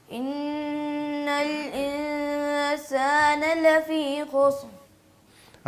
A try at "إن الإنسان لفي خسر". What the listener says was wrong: را کی آواز نہیں آ رہی، آپ ذرا را کو پڑھیں، خسر خسر۔ جی